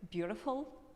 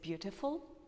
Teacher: Americans prefer to turn a T sound in the middle to R, like beautiful, but British people say beautiful.